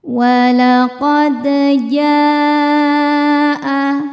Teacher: Walaqad, dal sukun dihukumi qalqalah sughra sebab ada huruf dal yang sukunnya sukun asli dan ada di tengah bacaan. Cara baca huruf dalnya ini adalah kita pantulkan dengan pantulan yang kecil. Walaqad jaa, ja hukumnya adalah mad wajib muttasil sebab ada mad tabi'i yang bertemu hamzah dalam satu kata.